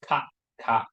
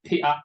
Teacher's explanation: Hong Kong people always swallow the final consonant.